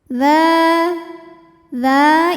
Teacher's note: dza ini hukumnya adalah Mad Thobi'i yaitu Mad Thobi'i muqadar karena dalal barisnya fathah panjang maka dalal kita panjangkan Cukup dua harakat saja